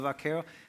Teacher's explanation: that bilabial V of varero sounds a little bit more like a B to the Americans